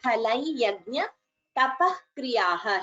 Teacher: here again visarga followed by ka is jihva muliya